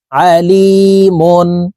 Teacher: তানুইনের পরে ইজহারের হরফ হা আসছে এই কারণে এই দুই পেশ ওয়ালা মিম কে গুন্না ছাড়া পড়বো